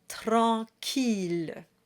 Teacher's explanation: the double L is a true voiced L sound. It's not a Y sound like we had in scintillement.